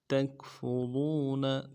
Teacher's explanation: فا کے پیش میں ہونڈوں گول کریں گے، اور رو کو را کو واو کے ساتھ ملانا ہے، واو مدہ ہے، ایک مقدار میں کھینچیں گے